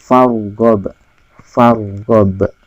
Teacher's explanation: ro sukun di awal huruf berharokat fathah, ro tafkhim, jadi dibaca tebal. Farghab, jadi mulutnya harus kedepanin.